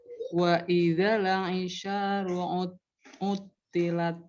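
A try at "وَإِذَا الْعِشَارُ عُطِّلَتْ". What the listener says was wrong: Nah, huruf lamnya coba jangan mantul, dirasain. Nah, itu ada pantulannya. Wa idzal aisyaru. Wa idzal Jangan buru-buru, lamnya itu dialirkan dulu. Wa idzal Coba. Wa idzal pokoknya kalau ada e-nya mantul itu. Wa idzal Nah, coba sambil dengerin bacaan Ibu sendiri coba sambil dengerin.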